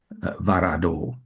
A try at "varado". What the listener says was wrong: Okay, right, because again, you slipped into a slight bit of English phonetic with the varado, varado.